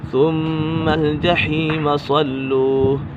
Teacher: ثم میم مشدد ہے، میم مشدد میں ہمیشہ غنہ ہوگا۔ ثم الجحیم صلوہ، یہاں پر صاد پر ہے، اسے پر پڑھیں گے حروف مستعلی میں سے۔